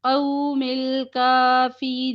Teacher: القاف موٹا باقی حرف پری